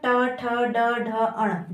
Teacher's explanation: ट वर्ग, ट, ठ, ड, ढ, अण, जब आप इसका उच्चारण करेंगे तो आप देखेंगे आपकी जीवा, आपकी जो जीभ है वो घूम करके, ठीक है, घूम के उच्चारण होता है, इसलिए इसको मूर्धा कहते हैं।